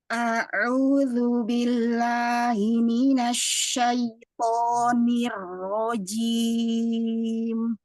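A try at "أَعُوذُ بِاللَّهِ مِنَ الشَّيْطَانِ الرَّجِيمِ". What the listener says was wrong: Hati-hati pada jimnya, tidak terkecap jim ya. Sempurnakan dia di tengah lidah bertemu dengan langit-langit tengah. Jim ya, bersihkan.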